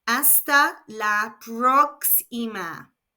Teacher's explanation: The O of próxima has an accent, so the stress is on the first syllable.